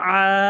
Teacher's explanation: এক আলিফ টেনে উচ্চারণ করতে হবে